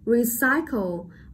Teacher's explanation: Ở đây chúng ta sẽ đánh trọng âm rơi vào âm tiết thứ hai bởi vì nó là nguyên âm đôi